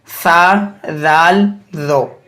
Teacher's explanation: ज़बान की नोक जब ऊपर वाले 2 दांतों के सिरे से लगे तो इससे सा, राल, रो अदा होते हैं